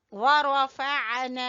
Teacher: रा को पुर पढ़ना है और आइन को गले के दरमियान से निकालना है